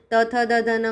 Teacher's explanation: त, थ, द, ध, न में हमारी जो जिह्वा है वह हमारे टीथ को स्पर्श करती है